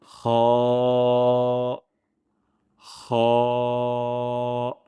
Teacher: হলক বা কণ্ঠনালীর শেষ ভাগ বা মুখের দিকের শেষ অংশ থেকে এই হ আমরা উচ্চারণ করব। অনেক সময় আমরা যখন মাছ খাই, মাছ খাওয়ার পর যদি কাঁটা লেগে যায়, তখন আমরা যেই সাউন্ডটা করি সেইটাই হলো হ উচ্চারণের স্থান এবং এই হরফটি মোটা হবে। · এই হরফটি মোটা হবে। হ, আবার ঠোঁট গোল হয়ে যাবে না। ঠোঁটের কোনো মুভমেন্ট এখানে হবে না।